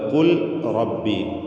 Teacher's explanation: കുൽ റബ്ബി എന്നതിൽ കാഫിന് തഫ്സീം കൊടുക്കുക